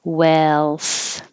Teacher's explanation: You only hear the vowel eh, as in head and yes